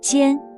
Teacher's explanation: This is the first tone, a high, flat sound.